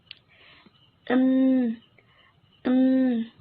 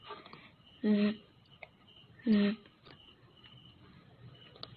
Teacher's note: Voice sound, dalam melafalkan bunyinya, tenggorokan kita bergetar.